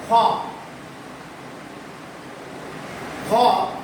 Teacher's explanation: মহাপ্রাণ ধ্বনি যখন উচ্চারিত হবে তখন বাতাসের বেগের পরিমাণটা একটু বেশি থাকবে, চাপ প্রয়োগ বেশি হবে। হ বিধায় একে বলা হয় মহাপ্রাণ।